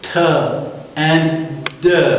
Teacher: our tip of tongue touches the back of ridge, th and d. Okay, their manner of articulation is stop.